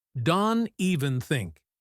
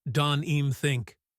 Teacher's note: Sometimes it sounds like donim think. Native speakers are lazy with the V sound in even when they are rushing.